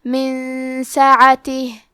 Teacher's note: سین حروف الاخفاء میں سے ہے، تو ہم یہ حکم کو غنہ کے ساتھ ادا کریں گے